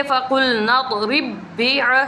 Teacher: دو با ہم نے پڑھے لیکن ہمیں محسوس نہیں ہوتا، ہمیں محسوس ہوتا ہے کہ ہم نے ایک ہی با پڑھا ہے · را کے نیچے زیر ہے تو را کو باریک پڑھیں گے